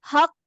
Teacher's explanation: جب آپ دوسرے قاف کو قلقلہ دیتے ہیں. کیونکہ جب آپ قاف کا لیٹر پڑھتے ہیں یہ شدت کا لیٹر ہے, مخرج میں آواز بند ہو جاتی ہے